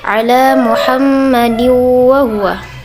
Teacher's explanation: Cara membaca gunnah yaitu huruf mim dibaca dengan dengung antara 2 sampai 3 harokat